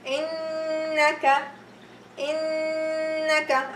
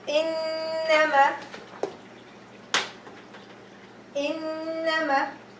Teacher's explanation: If I say the word innaka, let's go the noon. So I'm gonna pronounce it with the ghunna, 2 haraka